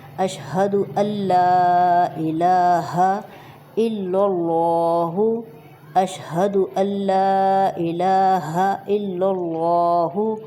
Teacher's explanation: الف کو ہم لام شد کے ساتھ ملا دیں گے